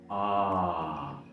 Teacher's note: Ah, entonces es una vocal relajada, ya que no mencionamos nada. Es trasera por la posición de la lengua y es abierta por lo mucho que debemos abrir la boca. Además, es uno de los cinco sonidos de vocales largos del inglés que lo puede ser representado en el alfabeto fonético por esos dos puntos. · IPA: /ɑː/